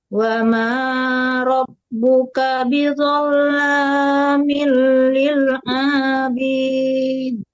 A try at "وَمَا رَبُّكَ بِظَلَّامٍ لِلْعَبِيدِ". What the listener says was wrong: A-nya kenapa dipanjangin? Ulang lagi, Ibu.